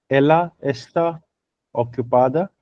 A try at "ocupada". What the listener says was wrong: It is not exactly ocu. It's oku. Ocupado.